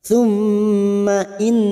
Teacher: mim yang bertasdid ghunah musaddadah kita dengungkan selama tiga atau dua harakat